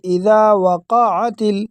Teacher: قاف کو بالکل واضح کر کے اس پر زبر پڑھیں گے تاکہ اس پر ساکن نہ آئے۔ اگر آپ ساکن پڑھو گے تو یہ بڑی مسٹیک ہے، اکثر لوگوں کو ہم نے دیکھا ہے کہ یہ مسٹیک کرتے ہیں۔